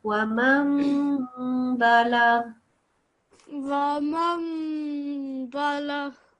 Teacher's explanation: the noon sound falls away and the meme sound is made to appear